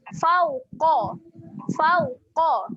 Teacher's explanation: Dekat sini saya nak fokus yang pertama huruf qaf. Qaf ni huruf tebal berbaris atas, kita akan bunyi dengan qa.